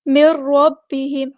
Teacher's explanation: میم کو را کے ساتھ ملا دینا، یہاں پہ ادغام ہو رہا ہے. مر، مر اس طرح میم سے می، میر نہیں پڑھنا، مر ادغام بلا غنہ ہو رہا ہے.